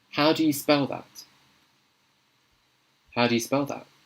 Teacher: So I'm using a glottal stop T at the end of that. I'm not saying that, I'm saying that.